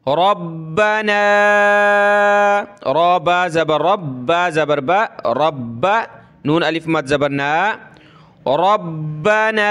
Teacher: را کو موٹا کریں گے، با کے ساتھ ملانا ہے، با کے اوپر یہ تشدید ہے، اس وجہ سے اس کو سخت کریں گے، اور نون الف کے اوپر یہ مد ہے تو اس کو ہم نے کھینچنا ہے۔